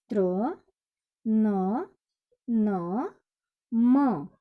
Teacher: इन व्यंजनों के उच्चारण में वायु यानी हवा मुख और नाक दोनों से बाहर निकलती है, जैसे त्र, न, न, म। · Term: नासिक के व्यंजन